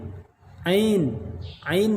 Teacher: Ain Maksudnya di tengah-tengah tenggorokan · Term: huruf Ain